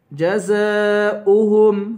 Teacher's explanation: جزاؤهم زا کو 5 الف کے برابر کھینچ کر پڑھیں گے اوہم حمزہ پڑھیں گے واو نہیں پڑھیں گے جزاؤہم حمزہ کی آواز آئے گی